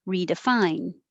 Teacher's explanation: again i'm not going to release the d